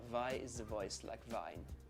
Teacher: notice also that on the word the in the voice the th sound is changed to a zed